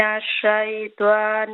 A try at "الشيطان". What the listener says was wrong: Shayta, not shaytwan rajim, sister. Shayta.